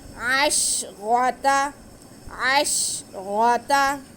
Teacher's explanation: منہسنتا، فَانفَجَرَتْ منہسنتا عَشْرَةَ، عین پہ زبر اور شین ساکن، عین کو شین کے ساتھ ملا لیں گے. آگے را پہ زبر ہے، را موٹا کر کے پڑھا جائے گا